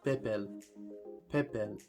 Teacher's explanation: whereas in this llama it would also be pronounced bebel pepel you can hear the p and the B sound exactly the same